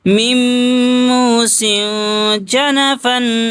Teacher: تنوین کی آواز کو ناک میں چھپائیں گے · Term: اخفا